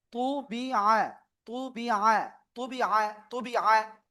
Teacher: শুধু তয়রস্যু বললেই কিন্তু হবে না, মানে এক কথায় বাংলায় যে ত রয়েছে না, ওই রকম বললে হবে না, এটা একটু মোটা যে পড়তে হবে।